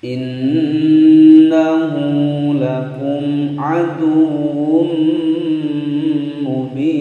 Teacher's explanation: Innahu nun bertasydid gunnah musyaddadah ditekan ditahan selama 2 ketukan.